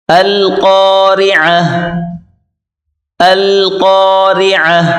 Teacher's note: قاف کو موٹا کریں، اس کے بعد را کو باریک کر کے پڑھیں، القاری، عین کو گلے سے نکالیں زور لگا کر، القارعہ القارعہ ملقارعہ ملقارعہ۔